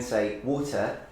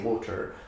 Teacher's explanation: the Bristolian accent pronounces the R at the end. So they don't say water like I do, but they say water, so that you have the R at the end.